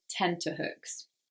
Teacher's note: thing but people commonly mistake this for tender hooks because again we say it quickly and that T can almost sound like a D